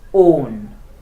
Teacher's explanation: So when it is stressed, that means in the first word on, in the word on, O is stressed. That is why it has a particular sound and pronounced longer with a high tone, on, right?